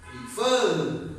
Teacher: So fur is stronger than pre.